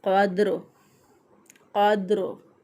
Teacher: रा जो है वक़फ़ की सूरत में साकिन हो जाएगा, रा के नीचे ज़ेर है। · दाल पे कलकला करते हुए उसी तरह कौफ को मोटा पढ़ते हुए अदा करेंगे, और दाल साकिन पर जुम्बश देते हुए, इसको हरकत देते हुए पढ़ेंगे। क़द्र, क़द्र। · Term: रा साकिन